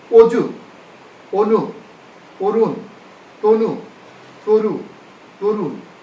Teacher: উকারান্ত ধ্বনির পূর্বে শব্দের আদ্য অধনির উচ্চারণ সাধারণত সংবৃত হয়।